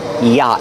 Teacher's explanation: The vowel, ah, is the open ah sound like hot and stop.